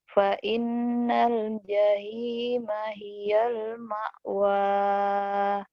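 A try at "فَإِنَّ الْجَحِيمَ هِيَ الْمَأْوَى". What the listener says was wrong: Hanya kurang tuh jahe. Hak kecil tuh kurang.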